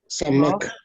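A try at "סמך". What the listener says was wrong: Not a K, but do a samech.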